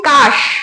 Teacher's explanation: যখন আমি কাশ উচ্চারণ করছি স্বরের সঙ্গে কিন্তু আমার কোনো অ আ ই উ আসছে না, অর্থাৎ কোনো স্বরধ্বনি আমরা উচ্চারণে পাচ্ছি না। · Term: রুদ্ধ দল